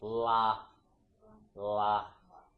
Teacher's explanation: with the la sound in English, an L sound, your tongue goes to like the tip of your alveolar ridge, which is like in your mouth, like the area up here, like la.